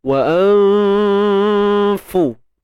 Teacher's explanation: Ikhfa hakiki tuan-tuan dan puan. Nun mati bertemu fa. Sembunyikan nun, jangan sebut nun tepat pada makhrajnya.